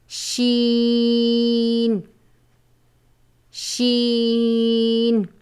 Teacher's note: زبان کے درمیان اور تالو کے درمیان سے ادا ہوتا ہے